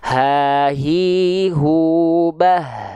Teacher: H besar itu dilafalkan dari pangkal tenggorokan, bukan dari dada kita.